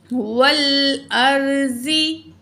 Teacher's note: रा को भी हैवी पढ़ेंगे, ज़ुगाद को भी हैवी पढ़ेंगे। ज़ुगाद जो है वो हरूफ मुस्तालिया है।